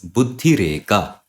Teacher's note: So here in this Rutva sandhi, the visarga is changed with this rakara, with this ra consonant. So buddhihi, eka, they combine as buddhi reka due to Rutva sandhi.